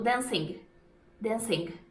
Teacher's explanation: Um som que eu estranhei muito, eu percebi isso mais em Londres, mas eu não sei se também outras regiões fazem isso, é que eles pronunciam o G no final do verbo com ING. A gente aprende que não se fala, né?